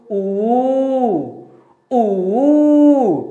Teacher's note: छोटा ऊ और बड़ा ऊ बोलते समय हमेशा क्या होता है? ये ओठ गोल हो जाता है।